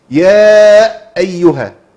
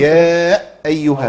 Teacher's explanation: وقفت، عملت سكت. عملت ده السكت ده تولد عنه همزه ساكنه